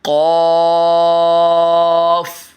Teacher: اس کو موٹا بھی کرنا ہے اور کھینچنا بھی ہے